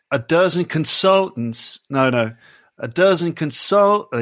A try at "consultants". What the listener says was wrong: Well, I wouldn't worry about the – there are two T's. We're talking about the last one that you're not making.